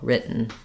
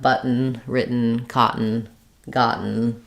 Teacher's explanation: I don't really say the schwa here. I just go directly to the N sound. It functions like a syllable. The letter N is syllabic N, meaning it's both the consonant and the vowel sound, the full syllable, written.